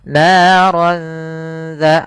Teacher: langsung ke huruf dalalnya sambil ditahan dengan gunah Kemudian pada lafal dza hati-hati jangan terbaca dengan za lahab dengan huruf zai karena di sini huruf dzal. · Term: ikhfa